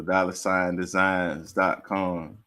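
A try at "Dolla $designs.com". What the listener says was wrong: it's dollar, so DOLLA, no R. Dollar sign.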